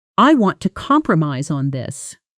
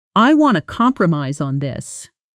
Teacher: in fast, natural speech, it almost always collapses into I wanna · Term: connected speech